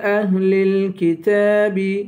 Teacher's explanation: تا پہ کھڑا زبر ہے، اسے ایک الف کے برابر کھینچ کر پڑھیں گے